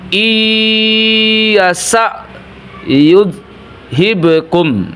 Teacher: Tapi kalau bertemu dengan ya, maka tidak terlihat lagi huruf nunnya, nun sukunnya, langsung menjadi ya. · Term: idgham gunnah